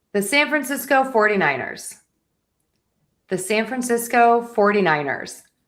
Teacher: this is a long one and so we have a lot of unstressed syllables and so it sounds like I'm speaking a little faster and that might help some people to think you need to make your syllables quicker, faster, and less precise in these longer combinations.